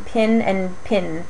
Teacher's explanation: it's interesting for its pin pen merger um both of those words are pronounced as homophones